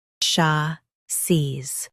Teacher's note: Both US and UK have the same pronunciation of this word. Stress sha. Keep seez smooth and clear.